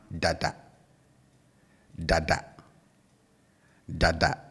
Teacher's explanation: For the second one, we have dada, dada, dada. And you can hear I bring the tone down on both syllables, right? So I say dada, dada, as against the first one, dada, dada, okay?